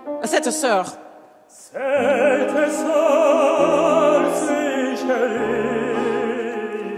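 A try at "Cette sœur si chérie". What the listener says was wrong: Give me more vowel. More vowel. Chérie. Cette soeur.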